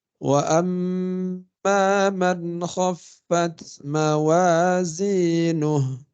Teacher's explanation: Nuh saja, bukan nuhu ya. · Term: hak dhamir